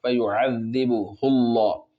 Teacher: फयुअज़्ज़िबुहुल्लाह, फिर यहाँ पर अल्लाह का लाम जो है वो मोटा होगा, इसलिए कि अल्लाह के लाम से पहले पेश है